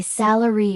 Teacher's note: The word is salary, and English learners almost always say sal with the stress on the second syllable. When native speakers say salary with the stress on the first syllable